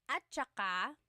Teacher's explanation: technically it's spelled at saka, but when it's pronounced, remember the TS combination, it makes that ch sound